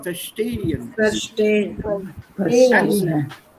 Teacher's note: don't put your accent on the prefix, but on the word itself. Avoid the prefix.